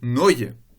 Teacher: ce sont les voyelles E, A et O qui deviennent toutes les trois un A en position non accentuée